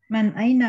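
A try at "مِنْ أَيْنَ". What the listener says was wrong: Aywa, man aina apa min aina? Ya, man aina apa min aina?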